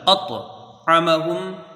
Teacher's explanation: طوا جو ہے حروف مستعلیہ میں سے ہے، حروف مستعلیہ میں سے، تو اس کو پر پڑھیں گے اور قلقلہ کر کے